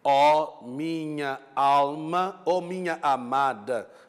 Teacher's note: E neste caso, estão a ver que a palavra minha e há dois vogais, portanto, duas vogais, encontram-se, dão lugar a uma só sílaba métrica